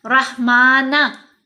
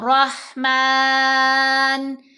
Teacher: जब हम वक्फ करेंगे तो नून को साकिन पढ़ेंगे, रहमाना नहीं पढ़ना, नून साकिन पढ़ा गया, रहमान।